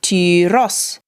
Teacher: So just like chrysos, we hold the upsilon for longer, but the accent, i.e. the stress, is on the os. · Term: long Upsilon, long upsilon